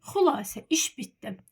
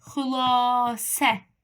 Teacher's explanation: Vurğu düşür əvvələ və burda uzanma yoxdur